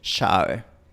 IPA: 'ʃa.βe